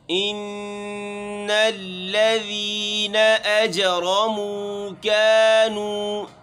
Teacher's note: ان یہاں پر غنہ ہے، آواز کو ناک میں لے کے جانا ہے۔